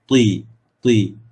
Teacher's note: Bila sebut ti, kita rasa kita punya lidah tu, hujung lidah tu, dia akan terkena ke bahagian tempat tumbuh gigi sebelah atas